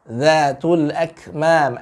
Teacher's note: Huruf dza itu ya, ujung lidah dengan ujung gigi seri. Yang bawah ini ya, ujung gigi seri atas, tapi yang bawah nih ya.